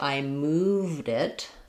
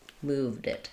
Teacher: That D is just going to naturally link. So, it sounds the basically the same as if I were to say move it.